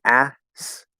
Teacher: it's kind of hard to do kt, right? Because they're two stop sounds right next to each other.